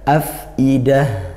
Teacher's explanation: Fa sukun dibaca ngalir dialirkan nafasnya